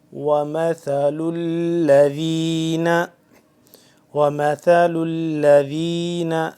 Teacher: ثا کو نرمی سے پڑھنا ہے، اور لام کے ساتھ مل رہا ہے، آگے لام تشدید ہے اس پہ، یعنی کہ لام مشدد ہو گیا تو اس پہ تھوڑا سا کھچاؤ پیدا ہو رہا ہے۔